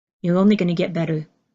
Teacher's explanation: you do hear this change from the strong T to a softer held in D